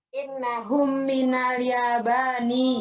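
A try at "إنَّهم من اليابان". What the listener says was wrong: Bagus sekali.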